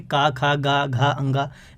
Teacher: का वर्ग जो है, इनको बोलने में जो आपकी वायु निकलती है वो कंठ से निकलती है। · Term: कंठव्य